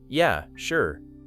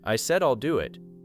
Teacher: Then you ask again, and they respond, "I said I'll do it." Now the words are not necessarily rude, but something in the voice feels stronger. The stress becomes heavier, the rhythm becomes tighter, the warmth disappears.